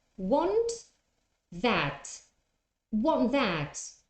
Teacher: The T is not pronounced. The tongue goes to the position of the T, but you don't say t